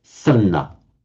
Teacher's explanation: So the D merges with the N. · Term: internal sandhi